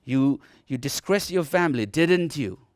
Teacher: If I have a doubt over this particular thing, I would prefer him to answer me, and therefore I would prefer to use a little up, rising tone. So the intonation will rise. · Now when I say like didn't you, when I go up, okay, I am telling him that I am not so certain on this